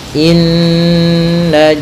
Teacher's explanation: kita menahan suara nunnya ya terlebih dahulu sepanjang dua harakat lebih sedikit